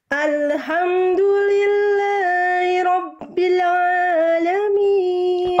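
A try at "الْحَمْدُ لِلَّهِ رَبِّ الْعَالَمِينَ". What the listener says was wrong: Huruf lam sukun Bunda jangan memantul. Ale. Alhamdu.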